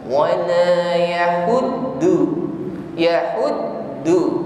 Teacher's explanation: kita fokus pada ujung lidah bunyinya menjadi Dal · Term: huruf Dal